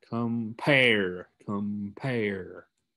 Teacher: So that shows you that it's a two-syllable word. The pair part is the one that your tongue puts more stress on.